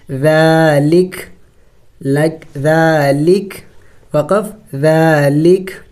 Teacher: ذال کڑی زبر ذا، لام زیر لی، کاف زبر کا، ذالک. وقف کریں گے تو وقف میں کاف کو سائلنٹ کر دیں گے، یعنی ساکن کر دیں گے